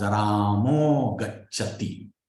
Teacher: that Ramaha, the Visarga, changes to O because it is followed by Ga, which is a soft sound.